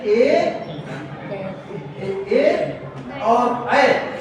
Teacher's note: ए और ऐ ये कंठ ताल से उच्चारित होते हैं। ए धन ऐ या ए और ऐ ये कंठ और ताल से, कंठ और ताल से।